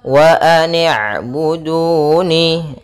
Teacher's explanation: ainnya memiliki sifat bainiyah, yaitu antara bacaan syiddah dan bacaan rokhawah. Syiddah itu tertahannya suara, sedangkan rokhawah mengalirnya suara. Nah, ain di antara keduanya.